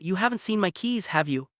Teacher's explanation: The speaker's voice rises at the end, showing they're unsure and really want an answer. · When your voice goes up at the end of a question tag, you're genuinely asking for information. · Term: Rising intonation, rising intonation